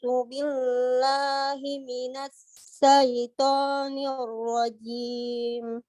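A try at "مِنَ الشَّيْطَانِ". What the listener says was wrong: Minasya, bukan sa. Tidak gigit lidah, jangan gigit lidah. Minasyai.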